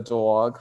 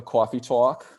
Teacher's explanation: And of course, New York has that awe raising.